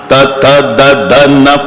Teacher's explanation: प्रत्येक वेळेला जीभ मारते धक्का दाताला